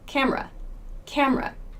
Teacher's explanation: this E in camera, we don't say the E sound in camera. In fast speech, we say camera, camera. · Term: schwa